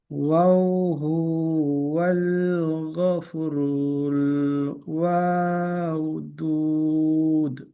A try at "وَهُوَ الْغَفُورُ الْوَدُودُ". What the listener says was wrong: ওয়াওটা টান নেই। ওয়াহুয়াল গফু, ফুটা টান আছে, গফুরুল ওয়াদুদ।